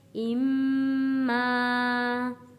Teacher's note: الف سے پہلے زبر ہے، حروف مدہ ہے، اس لیے ایک الف کے برابر کھینچ کر پڑھا گیا ہے